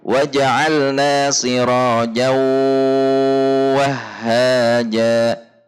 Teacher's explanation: di sini masih dibaca dengungnya tanwin sambil meleburkan zatnya pada huruf wawu yang ada di depannya, sehingga meskipun idgham tetapi idghamnya tidak sempurna atau idgham naqis. · Gunnahnya bukan dari huruf wawu dan ya-nya, tetapi gunnahnya dari tanwinnya.